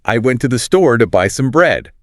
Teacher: The time between those stressed syllables is roughly equal and we just crush all the little words in between. We barely pronounce to the or some. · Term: stress timed language, stress-timed language